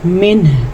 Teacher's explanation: اگر ہم یہاں پہ وقف کریں گے تو یاد رکھیں ہا کی آواز آنی مست ہے. نون ساکن کے بعد ہا ہے تو اخفا تو نہیں ہوگا، اظہار ہوگا، لیکن ہا کے مخرج کی آواز کلیئر ہونی چاہیے